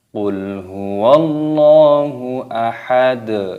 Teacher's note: lafadz Allah di sini dipanjangkan mad tabi'i. Jadi jangan ketika membaca lafadz Allah itu qul huwallahu ahad, tapi dipanjangkan dulu dua ketukan.